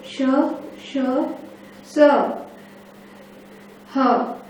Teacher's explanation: ऊष्म के उच्चारण में कंठ, तालु, मूर्धा तीनों का यूज हुआ है